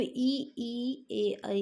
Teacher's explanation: अग्र में का मतलब क्या, जीभ जहाँ अग्र आगे टच कर रही है, तो ई ए आई इन चारों में जो है जीभ आगे टच करती है।